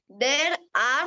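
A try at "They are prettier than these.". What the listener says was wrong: Are. There is not there. Are.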